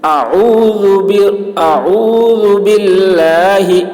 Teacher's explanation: باللہ میں اللہ کے لام کو باریک پڑھیں گے · ذال زبان اور آگے کا دانت جس کو ثنائے علیٰ کہتے ہیں، اس کا سرا اور زبان کی نوک، یہاں سے ذال ادا ہوتا ہے